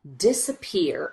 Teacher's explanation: this middle syllable we just rush through as quickly as we can